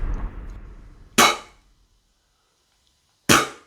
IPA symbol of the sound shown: p